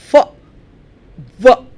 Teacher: the upper teeth are placed on the lower lip